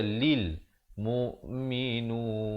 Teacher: Tapi yang betulnya kalil. Lam baris bawah bunyi li, bukan bunyi le.